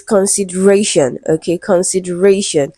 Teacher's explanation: So the word is stressed on the syllable before shun.